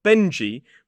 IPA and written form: ˈbendʒi (Benji)